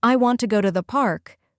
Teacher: For example, in the sentence, "I want to go to the park," the strong beats are want, go